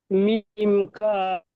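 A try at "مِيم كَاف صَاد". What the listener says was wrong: দিকে খেয়াল রাখেন, 3 আলিফ পুরে টান আছে, মিম কাম সদ সব 3 আলিফ পুরে টান হবে, একটু টেনে টেনে পড়েন।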